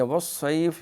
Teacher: یہ صاد جو ہے موٹی صاد ہے، سیٹی ہے اس کی